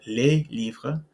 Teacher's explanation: So here we can see that in des, or even if we said les livres, that S is not pronounced.